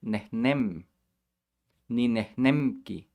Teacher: the m is made with your lips all the way in the front but the k is all in the back